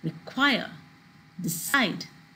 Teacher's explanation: it has two syllables the stress is on the last syllable